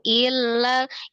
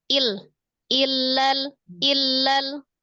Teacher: Yang penting tuh hamzah kasroh langsung di tasdid ke lam, langsung sukun.